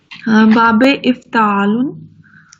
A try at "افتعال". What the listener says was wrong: افتعال، تا کے نیچے زیر ہے، افتعال.